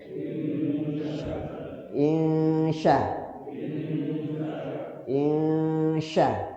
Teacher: Ikhfa. Cara bacanya nunnya disamarkan dan lidah kita langsung ke huruf syin.